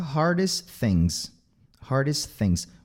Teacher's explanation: esse T vai cair, fica hardest things